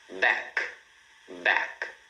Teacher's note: Back para no som do K, né? Esse som do C aqui na garganta.